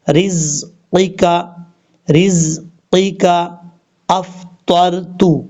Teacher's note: ہے، ایک الف کی مقدار لمبا کریں گے، رزقک، رزقک افطرت، پہلا قاف اس میں بھاری ساؤنڈ کے ساتھ پڑھا جائے گا